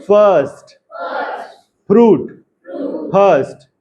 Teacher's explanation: लेबियोडेंटल, lips और lower lip जो है टीथ को टच करेगा, इंग्लिश वाले।